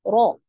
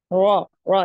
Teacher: Bergetarnya ujung lidah ketika pengucapan hurufnya dengan getaran yang halus disebabkan sempitnya makhraj. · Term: takrir